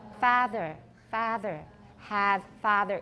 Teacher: if you listen to educated Scottish English, you will hear that they do not distinguish between a and ah